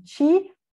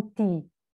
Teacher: Também, no nível fonológico, vai haver o fonema dental T, seguido de I, vai se palatalizar, vai se africar